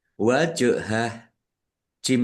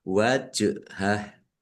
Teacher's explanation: Wal asyi yuriduna rok kasroh ya sukun mat tobi'i dal domah wawu sukun juga mat tobi'i panjang 2 harokat. Wajhah jim sukun bacaan kolkolah dibaca memantul ditampakkan pantulannya